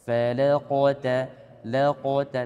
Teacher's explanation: Lamnya jangan sampai tebal. Fala di sini tetap tipis, fa dan lam, kemudian masuk qaf dia baru tebal.